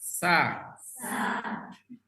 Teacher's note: kalau sa lidahnya datar kan enggak usah diangkat-angkat